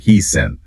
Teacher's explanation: Or how he's in can sound almost like one word, he's in. That linking is called catenation.